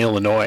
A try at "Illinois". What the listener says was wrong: No, you don't pronounce the S in Illinois. It's Illinois. Not Illinois.